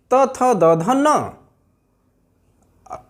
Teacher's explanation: अगला वर्ग त वर्ग है, दंत से बोले जाते हैं।